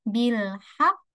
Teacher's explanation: ditekan suaranya ditahan dua harakat baru dipantul dipantulkan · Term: qalqalah akbar